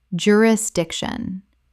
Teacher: Four syllables with the stress on the third.